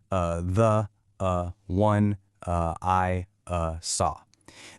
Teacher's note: You just intentionally stick a relaxed uh sound in between each word